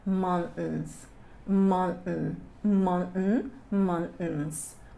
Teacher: we have like a glottal T. Então fica um T preso na garganta.